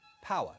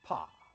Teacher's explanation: The three vowel sounds are smoothed to an almost singular vowel sound.